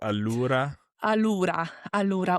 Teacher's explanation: I would elongate that U just to put more emphasis on the word allura